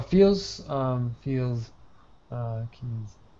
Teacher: These are both have a buzzing sound. Both have a Z sound.